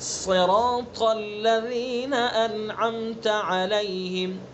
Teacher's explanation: ابھی آپ نے جو مخرج پڑھے ہیں، مخارج کے ساتھ ساتھ ان کی صفات کا ادا کرنا بھی ضروری ہے. صاد کی صفت ہے اس کو پر کرنا، منہ بھر کے پڑھنا